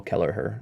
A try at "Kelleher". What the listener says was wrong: I don't think we're pronouncing the H.